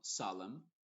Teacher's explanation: en palabras que terminan en MN, que hay algunas, la N es muda y la M sí se pronuncia. Por ejemplo, solemn, no se dice solemn y con la N al final, solemn, sino solemn.